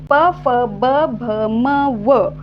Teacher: या वर्णांचा उच्चार करत असतानी दोन्ही ओठांचा उपयोग होतोय दोन्ही ओठांचा स्पर्श होतोय तोंडातील हवा बाहेर फेकली जात असतानी जे ओठ आहे ते बंद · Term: ओष्ठ वर्ण, ओष्ठवर्ण